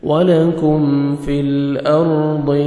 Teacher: لام کو ہم نے ہلانا نہیں ہے، را ساکن سے پہلے زبر ہے، را کو ہم نے پر کرنا ہے، ضاد کو موٹا کر کے پڑھیں گے